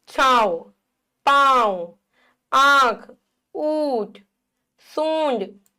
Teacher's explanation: अनुनासिक यानी कि चंद्रबिंदु। इसका उच्चारण नाक और गले दोनों से होता है।